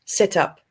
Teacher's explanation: we link it because the end of the word ends in a consonant sound and the next word starts with the vowel sound